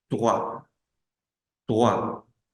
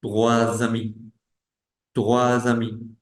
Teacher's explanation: Trois. Esa S no suena, pero cuando tenemos que hacer liaison, sí.